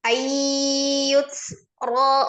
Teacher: idgham bi ghunah ayyut ro rnya ro berbaris fathah dibaca takhim tebal